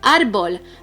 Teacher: The strongest syllable is the second to the last, and that's why it is una palabra llana.